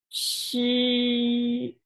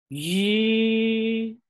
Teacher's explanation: the vocal chords are not vibrating at the beginning · the vocal cords are vibrating at the very beginning · these two syllables share the same vowel sound, the only difference is the onset consonant, they are a pair, a voiceless-and-voiced pair. the first one is voiceless, the second one is voiced.